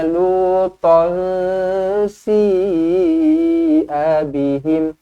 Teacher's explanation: Lutan dibaca dengan dengung, dua harokat. Lutan si'a bihim, si dibaca dengan panjang 4 ataupun 5 harokat, mad wajib muttasil.